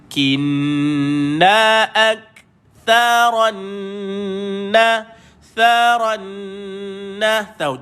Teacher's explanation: matikan Kaf keluarkan angin sikit